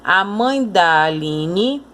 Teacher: Quando você vai ler, parece que essa palavra quase que se junta com a anterior. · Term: pronúncia fraca